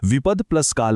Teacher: मृदू द नंतर कठोर क आल्यामुळे तो द सुद्धा कठोर म्हणजे त बनला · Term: प्रथम व्यंजन संधी